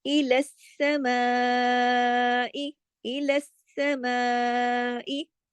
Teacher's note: اس کو سب باریک حروف پڑھے جائیں گے، ماں کو کھینچا جائے گا مد کی وجہ سے